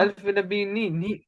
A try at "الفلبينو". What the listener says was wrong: पर भी, यहाँ भी जबर है. الفلبينو होगा ना. फिलिपाइनो. है जो इसको फिलिपीने कर दे, ऐसा कोई लफ्ज नहीं है. तो फिलिपीनो